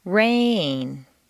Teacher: Make rain very musical and put it on 2 notes.